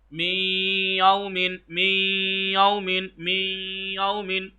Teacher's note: नाक की फिजा से अदा कर रहा हूं, खींच के भी अदा कर रहा हूं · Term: इदगामे गुन्ना